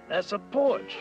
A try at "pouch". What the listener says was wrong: No, no, not porch. Pouch.